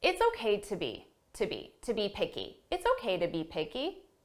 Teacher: But I didn't say it's okay to be picky. I said to be. So an unstressed to.